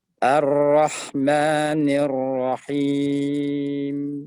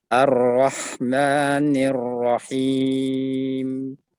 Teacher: Ada dengung, tapi dengung yang sedikit, beberapa saat. Jadi tidak boleh ditutup, dimatikan dengan seperti merem paksa mobil.